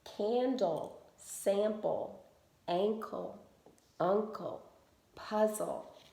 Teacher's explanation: in all of these words the first syllable is carrying the accent meaning that we just stress that syllable a little bit more